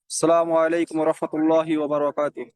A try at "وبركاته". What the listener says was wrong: ওয়া বারাকাতু, ওয়া বারাকাতু, হ্যাঁ তো বারাকা না হয়, ওয়া বারাকাতু, বারাকাল্লাহু ফিক।